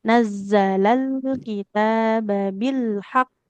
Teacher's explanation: lam sukunnya enggak boleh memantul